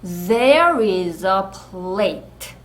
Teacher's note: are과 i가 연음돼요. 나고 이렇게 또 떨리는 소리 z로 날 거예요.